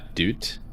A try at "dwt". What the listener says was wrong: It's not doot, it's dut. I don't know the conventions of like how the spelling works, but I'm not sure if it has to be like a w sound or if it's just dut. Just plain old dut.